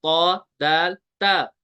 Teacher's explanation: जुबान की नोक लगती है ऊपर वाले दांतो की जड़ के साथ ये है ऊपर वाला दांत ये जो सिल्वर कलर में दिया